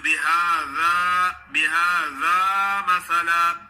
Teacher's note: زال کا مخرج ہے اوپر والے سامنے والے دانتوں کے نوکوں پہ زبان کی نوک لگائیں